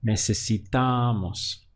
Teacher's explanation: the stress is happening on the penultimate syllable right before moss